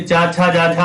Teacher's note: चा छा जा और झा जो होते ये आपके स्पर्श संघर्षी होते हैं